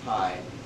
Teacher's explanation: you're going to notice a huge puff of air when you say pie, but not in spy. And that's called aspiration, and it happens with voiceless stops when they occur in word initial or in tonic initial position.